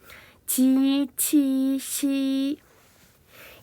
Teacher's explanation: 지치시 같은 경우에는 혓바닥 부분을 입천장 앞쪽으로 붙였다 떼거나 가까이 대면서 발음합니다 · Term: 설면음